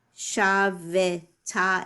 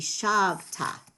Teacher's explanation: The vowel under the vet, the shva, is silent in the middle of a word. So it's not normally going to be pronounced shavita.